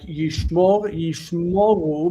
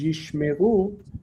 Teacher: But the O, like yishmoru becomes yishmeru, the O reduces because of the movement of the stress